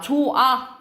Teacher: 결합할 때 히읗이 탈락하는 거예요 · 조아 이런 식으로 히읗이 탈락된다라고 보시면 되겠죠